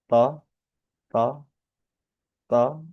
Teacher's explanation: lidah ujung itu nempel ke belakang gigi seri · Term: huruf to